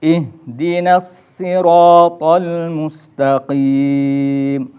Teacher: ketika membaca mustaqim itu harus dibaca panjang 2 harokat atau 4 harokat atau 6 harokat. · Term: mad arid lis sukun